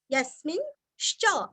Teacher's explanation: यस्मिंश्च, यस्मिन्, यस्मि, य के ऊपर आघात, स्मी रस्व, स्मिता का स्मी और अनुस्वार का उच्चारण हल्का सा न, यस्मिन्, यस्मिन् श्च, आश्चर्य का श्च, यानी कि आधा श और च पूरा